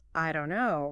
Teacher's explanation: The don't and the no kind of merge together. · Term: linking